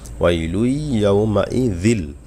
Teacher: জাল জিব্বার আগাদে বলবেন